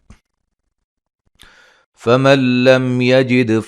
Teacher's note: نون ساکن کا ادغام بلا غنہ ہے، میم ساکن کا اظہار ہے